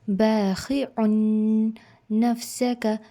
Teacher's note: باخِعٌ نفسک، نون کے اوپر آپ کو جو ورڈ نفسک آ رہا ہے اس کے اوپر نون مشدد ہے، نون کے اوپر تشدید ہے، تو ہم اسے تھوڑا دبا کر پڑھیں گے، جلدی نہیں پڑھیں گے، تھوڑا سا اس کے اوپر ہولڈ کر کے جائیں گے آگے۔